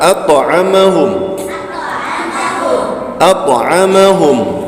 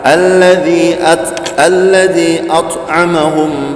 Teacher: Dia bukan rakhawah, bukan bainiyah atau tawassul, tapi dia syiddah dan jahar pula, al-jahr.